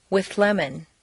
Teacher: the TH moves back and the L moves forward to meet in a new middle position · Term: composite sound